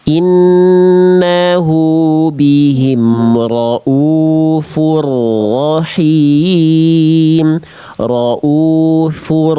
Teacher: tasdid itu tetap ada getaran. Memang nggak boleh berlebihan, tapi bukan berarti menghilangkan getarannya. Getaran ro itu tetap ada. · Memang nggak boleh berlebihan, tapi bukan berarti menghilangkan getarannya. Getaran ro itu tetap ada. Nama sifatnya takrir.